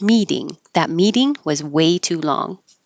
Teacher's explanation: this T will always change to a d for American English